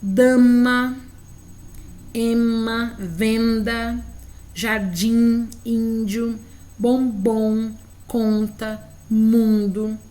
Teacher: temos aqui cinco sons nasais somente nas vogais